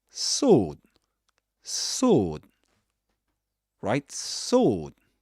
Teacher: This long O sound without pronouncing the W. You don't say sword, but sword, sword.